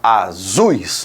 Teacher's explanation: Eu tenho um som mais forte no u e mais fraco no i eu falo azuis não azuis certo então o que acontece tá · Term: ditongo decrescente